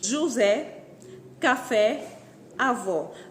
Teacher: repare que o acento nestas palavras é colocado na última sílaba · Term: oxítonas